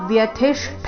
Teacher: ಥಿ ರಸ್ವ ಮಹಾ ಪ್ರಾಣ ಅದರ ಮೇಲೆ ಆಘಾತ